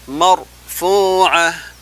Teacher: Di situ ada huruf ra sukun, sebelumnya ada baris atas atau fathah, maka dibaca tabkhim, tebal. Marfu'ah, dengan sifat takrir bergetar dua kali, tidak dibaca mar, tapi mar, seperti itu.